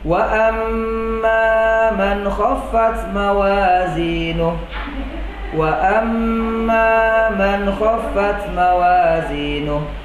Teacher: ghunnah musyaddadah ini harus ditahan didengung selama dua harokat baik berada di tengah ya Tengah kata ataupun di akhir kata